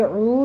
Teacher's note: عین وسط حلق سے ادا ہوگا